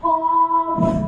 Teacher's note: 5 নম্বর মাখরাজ জিহ্বার গোড়া থেকে একটু আগে বাড়াইয়া তারপর উপরে তার সঙ্গে লাগায়া কাফ